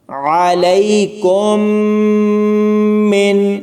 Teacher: یعنی اس جزم والی میم کو نہیں پڑھنا، کاف کو میم تشدد والی کے ساتھ ملائیں گے۔